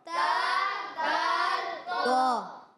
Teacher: یعنی سامنے فرنٹ کے جو دانت ہوتے ہیں اس کی جڑوں میں لگائیں تو ادا ہوگا تا دال تو